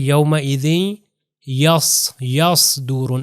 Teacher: صاد جو ہے پیچھے سے زبان تھوڑی سی اوپر چلی جاتی ہے، اور جتنے بھی حروف کو موٹا ادا کرنا ہوتا ہے وہ زبان پیچھے سے اوپر لے جائی جاتی ہے.